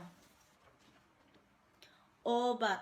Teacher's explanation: vokal ini dibentuk dengan kedua bibir agak maju kedepan dan agak membundar serta belakang lidah agak meninggi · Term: vokal sedang belakang bulat